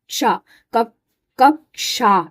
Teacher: इसमें क और श मिला इसलिए इसकी साउंड में भी क और श की आवाज आती है